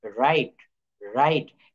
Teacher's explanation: এখানে ডাব্লিউ আমরা টোটাল বাদ দিয়ে রেখেছি উচ্চারণ করার সময়। WRITE, রাইট, রাইট।